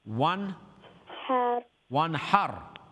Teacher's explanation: There's noon sakin is har. One har after noon sakin, there's ha from the throat letters. So noon sakin will be read clearly without any ghunna.